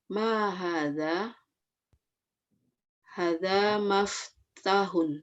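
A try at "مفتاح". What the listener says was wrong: Bukan maf. Ayo. Maf.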